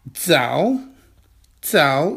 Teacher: It's a falling tone. 知道 知道 Zao is a third tone character. That's a falling tone and rising tone.